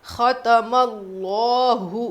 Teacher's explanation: خ موٹا پڑھیں گے. تم اللہ لفظ اللہ کے لام سے پہلے زبر تو اسی کو موٹا پڑھنا ہے.